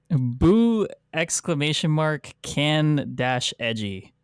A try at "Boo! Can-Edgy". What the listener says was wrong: I don't think you pronounce the exclamation point. You just read it exuberantly, right?